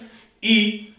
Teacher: बिल्कुल थोड़ा सा, हल्का सा ही मुख खुलता है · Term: सव्रत